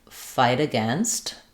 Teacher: for this T, it's going to link to the uh of against and it'll turn into a flap